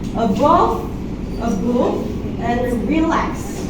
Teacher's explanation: One unstressed syllable followed by one stressed syllable.